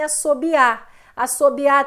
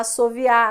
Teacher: A degeneração é sempre essa transformação do B para o V.